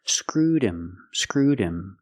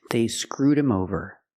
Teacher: with him the H is silent because him is not an important word we don't stress the word the H is silent screwed him screwed him link The Sounds